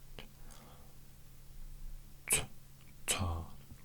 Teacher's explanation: So it's a T but with the constricted throat.